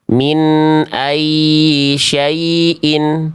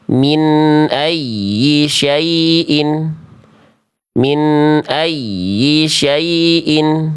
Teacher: Nabroh atau nabr. Nabr itu artinya penekanan yang lebih kuat pada huruf ya bertasydid sehingga menghasilkan suara bacaannya terdengar lebih meninggi dibanding sekitarnya. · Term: naber